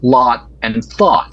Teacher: In the western half, and also in Canada, they're the same vowel.